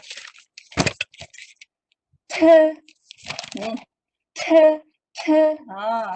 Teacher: T mestilah T juga tapi ada angin.